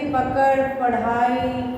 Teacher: इनका प्रयोग शब्द के मध्य या अंत में होता है। इनका उच्चारण करते समय जीभ झटके से ऊपर जाती है। इन्हें उच्छिप्त वर्ण भी कहते हैं, जैसे पकड़, पढ़ाई।